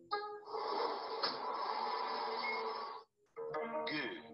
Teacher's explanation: As we make that sound, note how the base of the tongue blocks the throat. That is what the Korean G looks like.